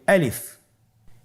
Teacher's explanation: আলিফ হরফটি মাখরাজ হলো আপনার মুখের শূন্যস্থান থেকে। গলা এবং মুখের শূন্যস্থান হতে আলিফ হরফটি উচ্চারিত হয়